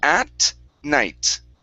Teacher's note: Bring the tongue way forward. So it's a T sound. · When we pronounce the T, the tongue is way forward.